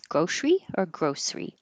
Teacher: we don't pronounce the middle e and make it three syllables